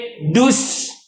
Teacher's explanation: sin ni dia ada tiga sifat yang kena kena jaga betul-betul. Hams, rakhawa, Safir.